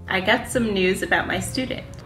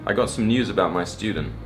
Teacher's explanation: The Americans just say ooh, but the English people add a y sound in there, and they say you.